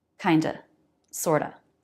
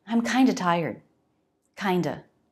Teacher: Then it's just the schwa, and we pronounce it this way in phrases like kind of and sort of.